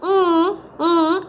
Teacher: it's velar because the back of the tongue goes against the velum which is lowered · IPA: /ŋ/